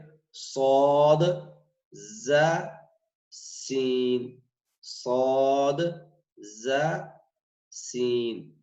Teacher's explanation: یہ صفیریہ ہے حروف اور سیٹی کی آواز آتی ہے. یہ دیکھیں کہ یہ زبان کی جو نوک ہے وہ یہ 2 دانت ہے ثنایا اولیاء یہ والے, اس کی جڑ سے لگ رہے ہیں.